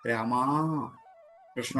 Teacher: ദൂരെ നിൽക്കുന്ന ആളിനെ വിളിക്കാൻ രാമാ, കൃഷ്ണ എന്നൊക്കെ വിളിക്കുമ്പോൾ ആ അന്തിമ സ്വരം ദീർഘിച്ചാൽ പോലെ ദീർഘത്തിന്റെ ഇരട്ടിയായാൽ അത് പ്ലുതം